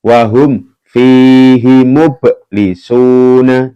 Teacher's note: Mublisuna mub ini dibaca mantul ya karena ba ya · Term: qalqalah